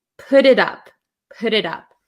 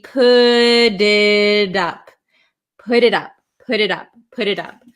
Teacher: when we have a t sandwiched between two vowels a lot of the times in American English it's going to turn into a flap T which sounds like a d